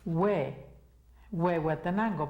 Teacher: no está sonando la h lo que ves es que no está sonando como la h en inglés